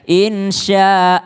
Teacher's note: kalau orang mengatakan Insyaallah Allahnya jadi tebal